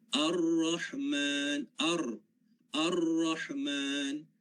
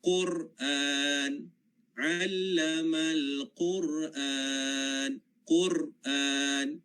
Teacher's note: maka akan berlaku getaran tapi getarannya sedikit satu ataupun dua kali